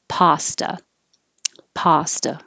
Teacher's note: Americans pronounce this with an ah